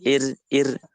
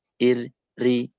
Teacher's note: rok tarkik itu hanya terlintas di tepi lidah, ya, di ujung lidah mas saya.